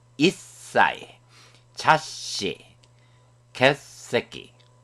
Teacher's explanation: 사행의 글자가 강해져서 싸, 시, 스와 같은 발음으로 강하게 발음됩니다